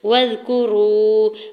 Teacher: واو ساکن سے پہلے را کے اوپر پیش ہے، واو مدہ ہو رہا ہے، 2 حرکت کھینچ کے ادا کریں گے · واو کی زبر کو زال ساکن کے ساتھ ملاتے ہوئے پڑھنا ہے۔ کاف کی پیش کو جلدی سے ادا کریں گے۔